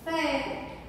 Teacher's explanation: A última sílaba é a mais forte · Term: oxítona